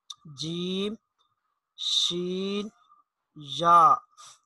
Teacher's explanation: وسط زبان، زبان کا جو درمیانی حصہ ہے، زبان کا درمیانی حصہ جب بالمقابل اوپر کے تالو سے لگے تو اس سے جیم شین یا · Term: مخرج نمبر 7